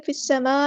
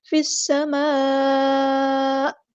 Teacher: حمزہ ساکن کی آواز جھٹکے والی آنی چاہیے